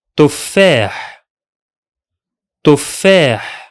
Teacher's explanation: The two sounds of the doubled letter are not in the same syllable. That's why you feel like there's a drop or a gap in its pronunciation, as if the word was written like this.